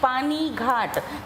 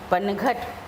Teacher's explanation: कभी दीर्घ स्वर है जैसे कि पानी घाट, तो दीर्घ स्वर है तो हम उसको लघु स्वर में बदल देते हैं और पानी घाट को बना देते हैं पनघट।